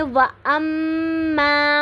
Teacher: وَأَمَّا پہ میم مشدد ہے، تو یہاں پہ آواز کو تھوڑی دیر کے لیے ناک میں ٹھہرائیں گے تو غنہ کریں گے.